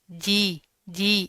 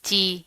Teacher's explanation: اس کے اندر چے کی ساؤنڈ نہیں آنی چاہیے